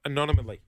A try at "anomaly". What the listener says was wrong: Anomaly. you're putting an extra syllable in.